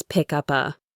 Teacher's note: the final sound of up is a P, which links to the vowel A